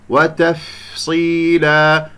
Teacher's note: موعظة وتفصيلا، هنا تنوين مع الواو أيضا إدغام بغنة من أحرف ينمو، والفاء حرف مخرجه ضعيف يحتاج إلى كمية من الهواء يعني همس وإلى جريان للصوت حتى أسمع صوته